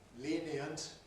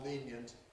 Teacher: the speaker can freely choose whether to say 'lenient' /ˈliːniənt/ as three syllables or /ˈliːnjənt/ as two syllables. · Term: compression